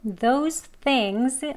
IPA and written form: ðoʊz θɪŋz (those things)